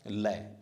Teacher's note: और इनमें से ये सभी, वैसे दांतों सब में जीभ दांतों से टच करेगी, तय, थे, दै, धै, लय, से, लेकिन दांतों से ध्वनि बनती है जीभ के टच होने से, लेकिन लय ध्वनि है जो दांतों के पिछले भाग से वायु बढ़ती है। जब लय का उच्चारण करते हैं, देखो दांतों के मध्य में वायु आती है, जब दांतों और गलाफू के बीच में, तो हमारा मुख स्पेस ऐसे खुला महसूस होता है, लय, इसलिए लय ध्वनि को क्या माना गया है, पार्श्विक वर्ण।